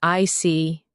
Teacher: When you show understanding with "I see," your tone drops slightly to show calmness